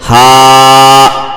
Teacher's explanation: الف سے پہلے ہا کے اوپر زبر ہے تو تھوڑا سا کھینچ کر کے پڑھیں گے کیونکہ الف مدہ ہوگا